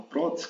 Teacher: Qual é a sílaba tônica aquela sílaba mais forte é pro